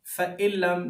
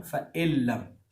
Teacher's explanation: جب نون ساکن کے بعد لام آ جائے تو نون ساکن نہیں پڑھا جاتا, وہ ڈائریکٹ جو کنیکشن ہو جاتا ہے پچھلے حرف کا آگے لام کے ساتھ.